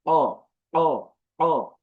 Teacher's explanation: গলায় একটি বাড়ি দেয়